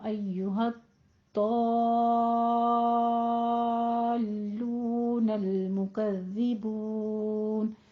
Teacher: सुम्मा इन्नकुम अय्युहद्दाल्लूनल मुकज़्ज़िबून, अय्युहद हद दा, ये डॉट 2 दफा अदा होगा। हद दा थोड़ी तशदीद के वजह से सख्ती करनी है, और फिर दो को आपने 6 काउंट करना है।